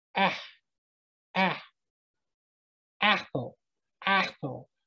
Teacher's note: So Aleph, listen to the ah sound, the ah sound. When you just say the sound ah, and you're just saying it naturally, it's very faint, but you can almost hear like a kh sound at the end.